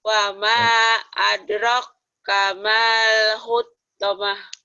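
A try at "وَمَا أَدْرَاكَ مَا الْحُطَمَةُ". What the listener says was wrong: Jangan ada tasdid ya, datar. Wama adro kamal hutamah.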